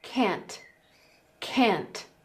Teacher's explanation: in American English they use a very similar vowel sound for can and can't and they also avoid releasing that T at the end